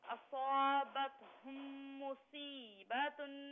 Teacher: اصابتهم میں جو میم ساکن ہے نا اس پر غنہ کیجئے